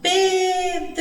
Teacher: a sílaba tônica da palavra Pedro é pé que é a palavra que teve né o som mais comprido